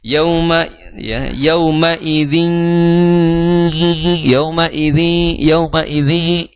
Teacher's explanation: t tanwin bertemu dengan huruf ya Maka dihukumi sebagai Idam bunah jadi jangan sampai dihilangkan gunahnya harus ada gunah